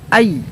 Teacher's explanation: حروف لین 2 ہیں، یا واو، یا سے پہلے زبر ہو، وا سے پہلے زبر ہو، تو یہاں پر یائے لین ہے، اس کو بھی جلدی پڑھیں گے، معروف پڑھیں گے، ای، اے نہیں، ای